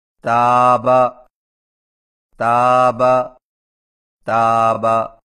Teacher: تا کی ادائیگی میں زبان کی نوک کو سامنے والے اوپر کے 2 دانتوں کی جڑ سے لگا کر باریک آواز میں پڑھیں